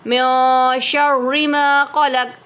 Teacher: اب میو کیوں پڑھا؟ کیونکہ نون ساکن کے بعد شین آ رہا ہے حرف اخفا میں سے، تو اس لیے غنہ کریں گے، اخفا ہو رہا ہے، ماں پہ الف مدہ ہو رہا ہے۔